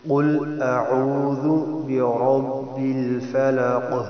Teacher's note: قل میں قاف کا خیال کرنا ہے، کل نہ ہو، اور برب را کو موٹا پر پڑھنا ہے، اور فلق یہ حروف قلقلہ میں سے ہے، یہاں ساکن بھی ہو جائے گا، قلقلہ کرنا ہے، یعنی آپ آسان الفاظ میں سمجھیں کہ آواز کو ڈبل کر کے پڑھنا ہے.